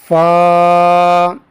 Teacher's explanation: فا ان حروف میں سے ہیں جو ہونٹوں سے ادا ہوتے ہیں